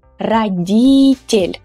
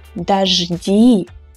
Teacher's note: unstressed о sounds like a weak а.